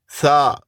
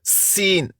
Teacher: سا سیٹی کی آواز نہیں نرمی سے. سین سیٹی کی آواز.